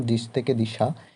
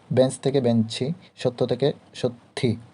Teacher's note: শব্দের শেষে অতিরিক্ত স্বরধ্বনি আসে, সেটি অন্তঃস্বরাগম।